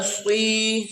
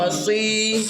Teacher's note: نوک زبان اوپر نیچے کے دانتوں سے مل کر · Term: سواد